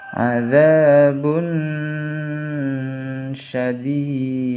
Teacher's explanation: dalnya huruf qalqalah, jadi harus dipantulkan, dinamakan qalqalah kubra karena matinya di akhir kalimat · tanwin bertemu dengan huruf shin, jadi harus dibaca samar